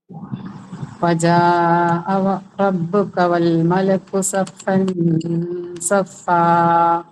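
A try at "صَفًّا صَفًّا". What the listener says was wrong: എന്താ പറയുക, നൂന് ഇൽഹാറായി കാണുന്നുണ്ട്.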